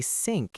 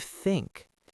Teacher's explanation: German speakers might say sink instead of think.